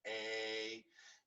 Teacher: the a sound is in the back of your throat